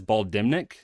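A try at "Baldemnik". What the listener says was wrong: The N you do not pronounce in terms of the audiobook. the way it's Baldemic. So there's no, you don't say the N. And that could be correct or no, but in the audiobook it was Baldemic.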